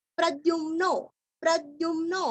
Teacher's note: यहाँ पे ध्यू नहीं है, द्यू है